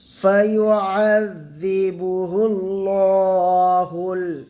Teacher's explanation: খাড়া জাবার আলিফ মাদ্দার সমতুল্য এক আলিফ টান দিয়ে পড়বো।